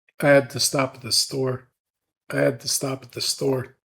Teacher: we're stretching the vowel in the word stop, and we generally stretch that vowel sound ah in American English.